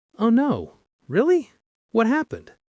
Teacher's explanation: Oh no equals empathy. Really rising intonation equals concern. What happened equals open question.